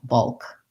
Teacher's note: making sure that you're just making one schwa and then going to your dark l